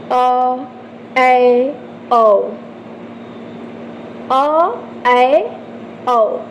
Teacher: इसके उच्चारण में मुख आपका क्या होता है थोड़ा सा विवत की तुलना में कम खुलता है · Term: अर्ध विवत स्वर